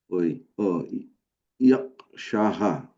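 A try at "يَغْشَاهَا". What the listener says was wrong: ইয়াগশাহা, একটা আলিফ আছে, শায়ের পরে একটা আলিফ আছে। ইয়াগশাহা।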